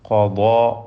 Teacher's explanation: ഖാഫ്, ദ്വാദ്, ദ്വാദിൻ്റെ അലിഫ് ഇവയെല്ലാം തഫ്ഖീം ചെയ്ത് തടിപ്പിക്കേണ്ട അക്ഷരങ്ങളാണ്